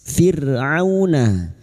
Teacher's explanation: ra sukun yang didahului kasrah dibaca tarkik atau tipis · Au huruf ain jangan tertukar hamzah, huruf ain wastul halqi atau tengah tenggorokan